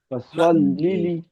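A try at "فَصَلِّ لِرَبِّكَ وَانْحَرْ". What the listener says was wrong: فصل لی ربی کا وانحر. لام کو لام سے جدا کرنا ہے. پہلا الگ ہے دوسرا الگ ہے. لی ربی کا یہ الگ کلمہ ہے.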